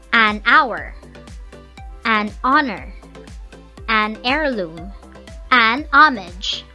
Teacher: The same goes with honor, heirloom, and homage. The sound that we hear is the vowel sound. We don't hear the consonant sound, that's why we use the indefinite article an.